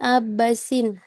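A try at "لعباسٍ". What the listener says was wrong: Sin. Bukan si.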